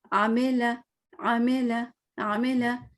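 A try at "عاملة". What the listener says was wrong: آپ نے زیر کو نہیں پڑھا, عاملہ.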